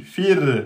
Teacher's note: racon il est précédé d'une kasra et donc il est aminci donc le ro quand il est scoun et qu'il est précédé de la kasra il est aminci